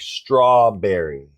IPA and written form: ˈstrɔːˌbɛr.i (strawberry)